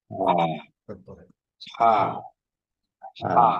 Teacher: Alif আপনি একটু খেয়াল করেন যে এখান থেকে আপনার বেরোচ্ছে না, এই যে গলার শেষ প্রান্ত থেকে হামজা এবং হা বেরোচ্ছে